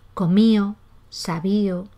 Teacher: Ese debilitamiento de la D se da en posición final, pero también cuando va entre vocales